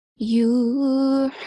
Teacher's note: ha, it has a prominent sound which comes from the middle of the throat.